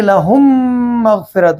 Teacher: میم ساکن کو میم مشدد کے اندر ملا کر پڑھیں گے اور غنے کے ساتھ پڑھیں گے۔ غنے کی مقدار تقریباً 2 حرکتوں کے برابر ہوگی۔ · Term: ادغام شفوی